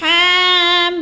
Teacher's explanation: अब अगला लफ्ज़ है हामीम, हा के ऊपर खड़ी ज़बर है, थोड़ा लंबा करना है, और मीम को जो है ज़्यादा लंबा करना है, और मीम, इधर 2 मीम इकट्ठे हो रही हैं, तो क्या है, जब आखिरी मीम को अदा करना है तो हमने आवाज़ को नाक में छुपा कर पढ़ना है